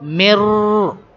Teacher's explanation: we merge this letter into the Ra, okay? Directly we connect Mim with Ra. Mim, Ra, Kasra, Mir. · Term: idgham